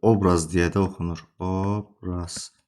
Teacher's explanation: Vurğu o-ya düşdüyü üçün o saiti o kimi də oxunur.